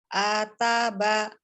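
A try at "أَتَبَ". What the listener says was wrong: Ataba, tidak ataba, tidak ataba gitu ya, tidak ya. Hamzah tidak terlalu terbuka a, tapi a saja. Ataba, ataba.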